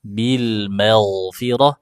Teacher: perhatikan huruf ghain itu tenggorokan bagian atas. Huruf ghain dan huruf kha itu sama makhrajnya.